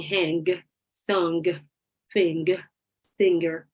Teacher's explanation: you feel how you cannot produce the sound if you cannot expel the air through your nose